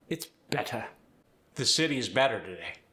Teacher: It sounds like there's 2 D's there instead of T's. Keep it crisp with the transatlantic accent. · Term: the crisp T